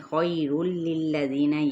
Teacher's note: خیر للذین، یائے لین کا قاعدہ ہے، خوا پر ہے، لام باریک پڑھا جائے گا